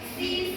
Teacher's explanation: vokal I dalam kata si merupakan vokal tinggi dan depan